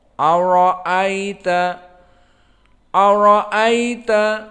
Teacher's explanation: Dan hamzah muraqqaqah dan ra mufakhamah, maka dibaca ara.